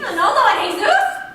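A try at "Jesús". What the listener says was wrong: You don't pronounce the J.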